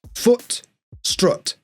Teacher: in the north, the word strut has the same vowel sound as the word foot